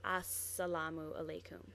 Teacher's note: Now here, this is an article at the beginning, and this usually is actually AL, but for some letters, when it comes before certain letters, it takes on the same letter. So instead of an al, it's an s because it's before an s.